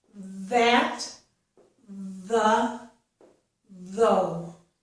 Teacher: This word, though, has the voiced TH, and that's the same sound as in the words that and the. It's th, th. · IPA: /ð/